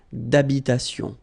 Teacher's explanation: H doesn't exist in French, well, in most of the cases. So it does mean that you don't pronounce it.